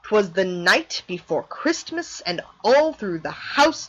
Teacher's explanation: either there's also things like the anapest that comes in three this one has two unstressed syllables followed by one stressed syllable